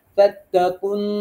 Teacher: কফ নুনকে ধরবে এবং নুনে ওয়াজিব গুন্না হবে। ফাত্তাকুন, এখানে ওয়াজিব গুন্না করব।